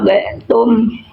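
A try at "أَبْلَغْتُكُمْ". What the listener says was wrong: Nah, bukan tum ya tukum diulang lagi ya.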